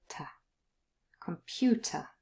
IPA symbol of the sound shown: ə